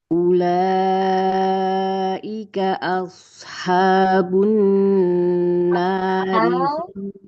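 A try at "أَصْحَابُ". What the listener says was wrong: Coba haknya ke tengah lagi. Ashabu.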